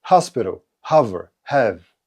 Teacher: Английското х не е твърдо като нашето.